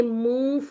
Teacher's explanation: نون کو مطلب اس طرح سے ادا کریں گے کہ جیسے نون ہمارے منہ میں تھا اور فا بس ادا ہونے ہی لگا ہے، ٹھیک ہے۔ تو یہاں پر ہم کریں گے 2 کاؤنٹ کا اخفا، ٹھیک ہے۔